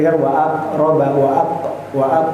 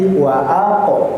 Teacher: Ya, qalqalahnya tadi kurang ter kurang jelas sedikit ya. Memang qalqalah sugra tipis tapi jangan pula seperti waa wa tapi waq diperjelas qnya